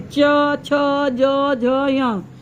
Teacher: च का जीभ जो ऊपर चिपकती है तालु में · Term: च वर्ग